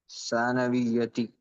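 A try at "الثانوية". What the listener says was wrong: Very good ji.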